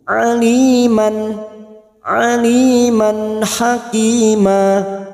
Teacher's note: fathah tanwin bertemu ha Idhar halq dibaca jelas tanpa mendengung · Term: idhar halqi